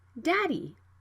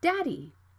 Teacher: the consonant can be flapped for example daddy you can see the d is between vowels so the sound can be flapped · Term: flap t and d